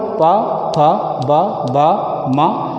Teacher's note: इनका उच्चारण ओठ से होने के नाते ये ओष्ठ वर्ण हैं